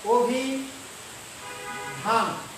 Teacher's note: যখন আমি এটা উচ্চারণ করতে যাব তখন দেখো অ হয়ে যাচ্ছে ও